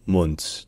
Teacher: le U, ça se prononce comme un OU court, ou plutôt intermédiaire entre un OU et un O. Et enfin le D à la fin, comme toujours en allemand, le D final se dit T.